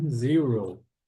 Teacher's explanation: quando forem pronunciar o zero parece que tem um U aqui antes do R